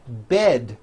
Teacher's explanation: Bed has a voiced D ending. It's not bet with an unvoiced T, it's bed with a voiced D.